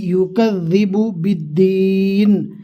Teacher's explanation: زا نہیں ہے، زبان کا کنارہ ہلکا سا باہر نکالیں گے تو دال آسانی کے ساتھ ادا ہو جائے گا